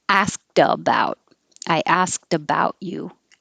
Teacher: sound like a t but it's spelled with a d and when there's a vowel after it now the t will sound like a d